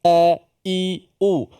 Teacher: huruf yang berada di Pangkal halquum kita kerongkong leher kita ini dan bersifat dengan suaranya yang tertahan nafasnya tertahan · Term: huruf hamzah